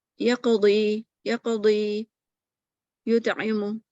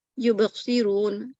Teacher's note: اور letter of قلقلہ appear in the middle of the word, تو یہ کم ہوتا ہے صغرا